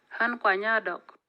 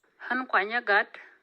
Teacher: When the preceding context is high toned, as it is an example in form, there is again a vowel length effect. The vowel before the noun with FSC is longer than before the noun without FSC. But there is no tonal change.